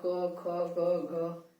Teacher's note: तो क वर्ग के जितने भी व्यंजन होंगे उसका उच्चारण स्थान क्या होगा? कंठ।